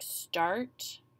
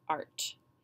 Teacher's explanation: you don't hear a clear long or a short a the R takes over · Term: bossy R